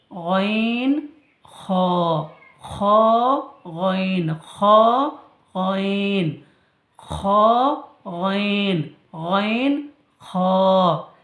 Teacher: খ গলার শেষ অংশ হইতে উচ্চারিত হয় কণ্ঠনালীর শেষ অংশ হইতে উচ্চারিত হয়